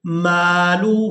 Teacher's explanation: یہاں ہا کو الٹا پیش کی وجہ سے کھینچ کر ادا کریں گے